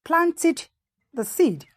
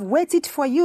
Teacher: you change the ed to ID